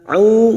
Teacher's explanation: huruf ain duma diikuti wawu sukun 2 harakat mad tabi'i